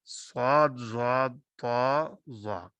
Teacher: जुबान का वस्त ऊपर के तालु की तरफ उठता है, और जिस वजह से ये हरूफ पुर पड़े जाते हैं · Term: सिफ्त इतबाक